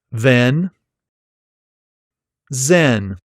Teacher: the z is pronounced with the tip of your tongue raised to your alveolar ridge, and it's a continuous voiced fricative sound